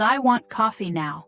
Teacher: Another example is, I want coffee now, with strong emotion on coffee.